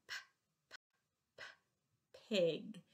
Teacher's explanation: If you hold your hand in front of your mouth, you should be able to feel a little air coming out when you do the p, p sound.